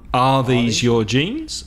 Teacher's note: to change the verb with subject so are these your jeans and the voice goes up